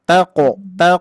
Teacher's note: qalqala huruf qof itu pantulannya mengarah ke bunyi o atau tebal